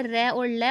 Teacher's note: दंत मूल, दंत मूल से र और ल उच्चारित होते हैं।